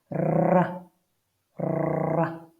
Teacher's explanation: now the R is rolled like a royal rolling their R's